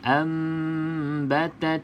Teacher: rapat bibir atas dan bibir bawah yang penting juga dengung dengung dua harakat